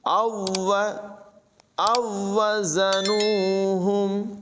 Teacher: یہ پہلی واو جو ہے یہ دوسری سے مل جائے گی